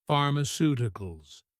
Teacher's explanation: Stress on the third to last syllable.